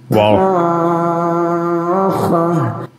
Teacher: heedless of others the words deafening blast is the arabic asaha when reciting this word the vowel is supposed to be stretched for six seconds as follows which gives the impression of a trumpet being sounded